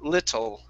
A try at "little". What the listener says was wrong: Give me a T sound.